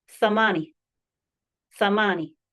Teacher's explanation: TH, as in thing. It's unvoiced.